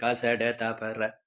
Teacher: வல்லின மெய்ெழுத்துக்கள் ஆறும் மார்பை இடமாக கொண்டு பிறக்கின்றன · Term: வல்லின மெய் எழுத்துக்கள்